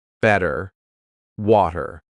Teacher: In American English, a t that's between two vowel sounds. It doesn't always have to be a vowel, but between two vowel sounds is going to change to a d.